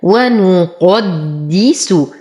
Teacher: نفخم القاف، نتم ضمة النون والسين